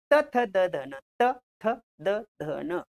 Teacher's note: आता इथं जीभ जिभेचा शेंडा दाताला लागतो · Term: दंत्य